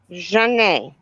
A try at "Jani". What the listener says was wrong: But less A. It's a very soft A. Jani.